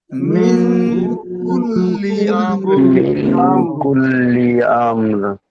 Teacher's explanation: ইকফার 15টি অক্ষর, ইকফার 15টি অক্ষরের মধ্যে একটা এসছে, নাকে তুলে একালি পরিমাণ গুণা করে পড়তে হতাম